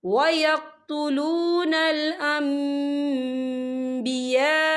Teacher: ये मद जो है मद मुत्तसिल है और इसकी मिकदार जो है 4 हरकत के बराबर है, तो हम इसे 4 हरकत के बराबर खींच के पढ़ेंगे।